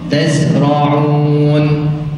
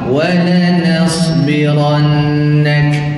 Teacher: Bila mana huruf sin, huruf zai dan juga huruf sad dia mati, maka desirannya, sifat safirnya adalah al-awsat. Maksudnya di pertengahan, tidak terlalu kuat dan tidak terlalu lemah.